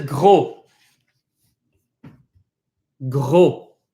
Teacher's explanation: It's kind of like saying oo, kind of like something between O and oo.